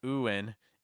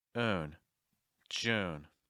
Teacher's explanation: make sure that you're not adding a syllable before the N. So it's not ooin, it's oon.